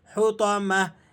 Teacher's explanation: اس گول تا کو وقف کی حالت میں آپ ہا سے تبدیل کر دیں گے